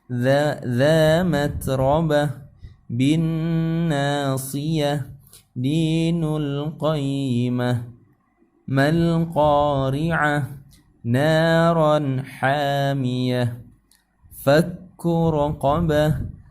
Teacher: Qayyimatun apabila kita wakaf menjadi qayyimah. Ta yang tadi isim pertama menjadi ha karena ini adalah ta marbutah